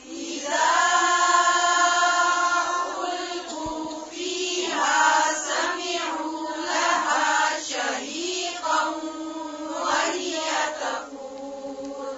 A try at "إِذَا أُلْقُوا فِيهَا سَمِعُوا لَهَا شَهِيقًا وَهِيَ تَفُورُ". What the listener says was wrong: سمعوا میم کی زیر کو اور باریک کریں پھر سے